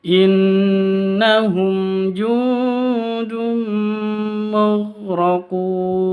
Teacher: Tanwin bertemu dengan mim. Cara bacanya langsung masuk ke mim. Ya. Masuk ke mim disertai dengung dua ketuk. Karena idgham bigunnah.